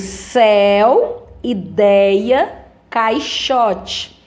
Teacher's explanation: ditongos orais o som sai pela boca né não tem aquele som fechado para eles entrarem pelo nariz só pela boca